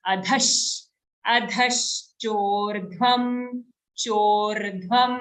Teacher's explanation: the dha has an aghat. So how are we saying it? We're putting extra force on the dha.